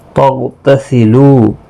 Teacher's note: غین ساکن پر قلقلہ نہیں ہوگا، غین مستعلیہ ہے، پر بھی پڑھا جائے گا، یہاں پر خیال رکھیں قلقلہ نہ ہو جائے گا۔